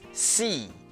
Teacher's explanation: For example, some may pronounce she as C. When pronouncing C, the tongue is not pushed up as much, leaving a bigger gap between the tongue and the roof of the mouth. Also, the teeth and the tongue tends to be more tense.